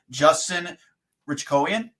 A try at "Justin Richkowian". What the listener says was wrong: Ritzkowian, yeah, it's like Ritz Cracker. Yeah, the H is silent. So you're real close there.